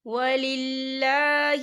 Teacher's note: یہاں پر اللہ کا نام باریک پڑھا جائے گا کیونکہ اللہ کے نام سے پہلے زیر ہے